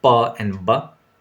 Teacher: Complete closure and sudden release. So when the two lips do that job, you get pa and ba.